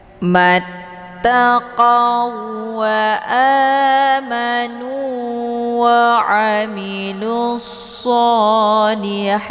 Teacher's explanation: Cara bacanya wau sukun langsung dimasukkan ke dalam wau yang bertasydid dengan cara ditekan dan tidak perlu ditahan. Hukum bacaan idgham mislain tiada berdengung.